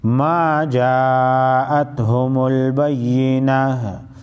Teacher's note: کله چې وقف کېږي ګولتاو په ها کې بدل شي